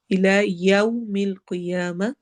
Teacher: یو واولین ہو رہا ہے ہونٹ پراپر پورے گول ہوں گے